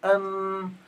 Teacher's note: فقلنا ان الميم بتخرج باطباق الشفتين ام عند منطقة الوسط ام دون ضغط مش ام او ام